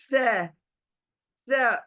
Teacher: आपकी जबान थोड़ी बाहर आएगी चौड़ी होकर, और ऊपर के जो दांत हैं हमारे, वो जबान को टच करेंगे, जो अब जोर से टच करेंगे। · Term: थ्री डॉट वाला लेटर